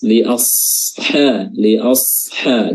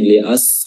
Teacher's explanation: bedanya huruf Shad itu dia memiliki sifat istila sifat yang tebal baik dia berharakat maupun sukun Nah di sini dia sukun makanya sifat istilanya harus dipertahankan Li